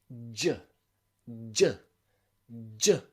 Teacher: your tongue starts up here and it finishes down here okay it's a very similar position to the ch the only difference here is that your vocal chords are vibrating it's a voiced sound